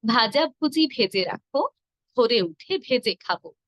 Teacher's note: এখানে সবগুলো হল ভ যেটি মহাপ্রাণ।